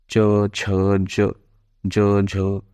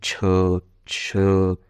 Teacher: इनका उच्चारण करते समय मुखांग द्वारा स्पर्श भी हो तथा हवा को बाहर निकलने में संघर्ष का सामना करना पड़े। यानी कि ऐसे नहीं कि एकदम से निकल जा रही है हवा, थोड़ा संघर्ष हो। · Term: स्पर्श संघर्षी